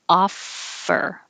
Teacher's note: the top teeth are on the bottom lip